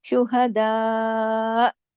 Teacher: یہاں پر ہم رکے اور ہم نے حمزہ پہ جا کے روک دی آواز اپنی، ہم نے یہاں پہ دا کو لمبا کھینچا اس کے مد کی وجہ سے، اس پر مد لگی ہوئی ہے. اور حمزہ کی جو آخری حرکت ہے زبر، اس کو ہم نے پاز کر دیا، اس لیے کہ ہم یہاں عارضی سکون کر رہے ہیں.